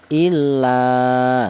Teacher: Di mana alif ini didahului huruf yang berharokat fathah, ini juga dibaca mad tabi'i yaitu panjangnya satu alif atau dua harokat atau dua ketukan